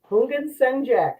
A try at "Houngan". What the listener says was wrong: It's like the H is silent, so like Houngan.